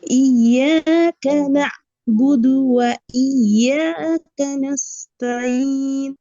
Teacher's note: আইনটা হামজার মতো শোনা গেছে। নুনের পরে হামজা হলে যেরকম উচ্চারণ হতো ওরকম হয়ে গেছে।